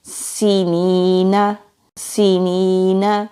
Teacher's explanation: سین سیٹی والے حروف میں سے ہے، سیٹی کی آواز آئے گی، یا سے پہلے زیر ہے تو یا مدہ ہے، ایک الف کے برابر کھینچ کر پڑھیں گے، نون کے اوپر زبر ہے، جلدی ادا ہوگا۔